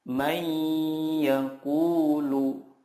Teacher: Cara membacanya adalah meleburkan nun sukun ke huruf berikutnya dan disertai gunnah yang dipanjangkan 2-3 harokat